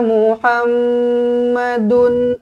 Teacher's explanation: mim sabdu wajibul gunah dengungkan dua harakat